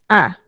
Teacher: আর কেন্দ্রীয় স্বরধ্বনি, কেন্দ্র মানে কি? কেন্দ্র মানে হচ্ছে একেবারে মাঝে, আ।